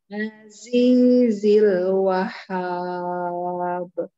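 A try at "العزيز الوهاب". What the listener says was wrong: Ah, hanya enggak tasdid Bunda. Wahhab. Wahhab. Mana baknya? Saya nungguin kol-kolnya enggak ada. Kan Wahhab. Wahhab. Wahhab.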